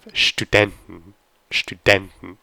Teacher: So this is an exception where you actually have Studenten, Studenten. So the stress is on den, Studenten.